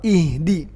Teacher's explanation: dalnya juga enggak boleh ada hamasnya